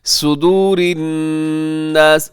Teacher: صدور میں صاد موٹا رکھیے گا، اسے باریک نہ کیجیے گا۔ صدور کا مطلب ہوتا ہے سینہ، اور اگر صاد کی جگہ سین کر دیں صدور، تو اس کا مطلب ہوتا ہے بال لٹکانا۔